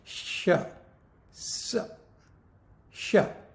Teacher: उष्म यानी घर्षक, जीभ का घर्षण, हवा का घर्षण होता है